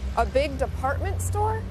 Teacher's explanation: raising her voice at the end of a sentence to make sure she understood about the department store